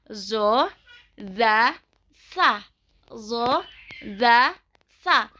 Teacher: Huruf-huruf ini disebut juga nit-iyah ataupun taring gigi. Yang ke-9, ujung lidah bertemu dengan kedua gigi seri atas. Keluar dari sini adalah huruf zo, zal, dan sa. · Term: huruf dza